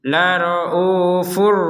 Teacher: tapi untuk yang laraufur rahim ini kita masukkan tanpa dengung